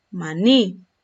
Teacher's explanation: Esta palabra yo la voy a tildar porque el acento lo tiene en la última sílaba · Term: aguda